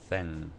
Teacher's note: the N that we normally say is uh articulated at the same place where you make a t